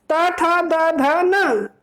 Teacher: जो आपकी जीवा है, वो कहाँ टच हो रही है? दांतों के साथ टच हो रही है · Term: दंत्य